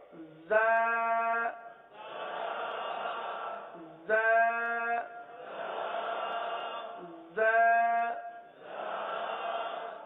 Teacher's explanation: جب ہم دونوں دانت بند کر لیں گے، جب ہم دونوں دانت بند کر لیں گے تو اب یہ دونوں کے کنارے پر زبان لگانا آسان ہو جائے گا۔ ویسے زبان زیادہ تر نیچے کی جانب رہتی ہے اور نیچے کی جانب رہ کر زا سیٹی کی آواز کی طرح اس حرف کی آواز نکلتی ہے